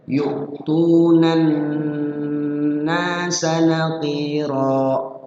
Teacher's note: Maksudnya jangan terburu-buru, ada jeda, ada proses jeda di situ, waktu, ada jeda waktu di nunnya. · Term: gunnah